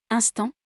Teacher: une voyelle de cette série est nasale 1 comme dans instant l'air sort par le nez et par la bouche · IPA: [ɛ̃]